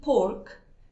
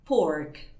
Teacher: En el inglés británico, por ejemplo, la R suele ser una letra silenciosa y solamente se pronuncia si tenemos una vocal después, bien digo, sí, como por ejemplo pasa en la palabra pork, que la decimos así, pork, sí, la R, porque está seguida de una consonante en la palabra.